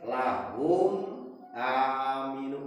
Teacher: tabi'i sahuruf hum aminu humna mim sukun eta disebut idhar safawi hartina nunikeun tong berdengung kana cukang irung tong eta mah idhar sesuai jeung mahraj mim dina antara dua bibir jelas eces nemres bentes lahum aminu pinahkeun geus beres mah ngunikeun mim